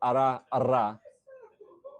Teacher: a tapped R is kind of doing the movement once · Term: alveolar tap